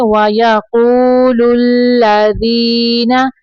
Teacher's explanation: واو ساکن کے پیچھے پیش ہے، واو مدہ تھوڑا لمبا کریں گے۔ وَيَقُولُ الَّذِينَ، یہاں پہ دیکھیں یا ساکن کے پیچھے زیر ہے تو یہ یا مدہ ہے۔